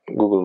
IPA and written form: ˈɡuːɡəl (Google)